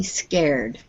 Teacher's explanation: So we don't have ed on the end. It's just a d.